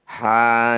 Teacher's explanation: huruf ha yang berharakat fathah panjang atau fathah berdiri ini disebut bacaan Mad Thobi'i panjangkan dua harakat